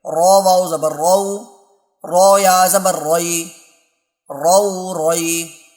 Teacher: چونکہ رو کے اوپر زبر ہے اس لیے رو کو موٹا کر کے پڑھیں گے